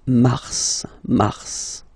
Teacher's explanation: normally final S is not pronounced in French. Okay, we've got some exceptions and this one is one of them. So mars, pronounce the final S